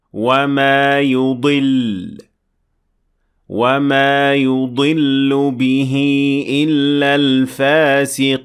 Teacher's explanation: So you try harder to show the lam at the end of the word without pronouncing the vowel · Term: shadda